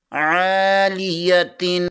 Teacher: عین زبر کے آگے الف مدہ ہے، اسے ایک الف کے برابر کھینچ کر پڑھیں گے۔